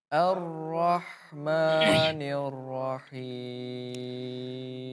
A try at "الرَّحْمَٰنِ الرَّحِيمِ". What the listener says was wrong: Ar-ra ya, difathahkan dulu. Memang di ra di situ ada ketebalan yang harus ditebalkan ya.